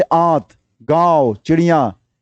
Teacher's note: नाक से बहुत कम सांस निकलती है, मुख से अधिक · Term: अनुनासिक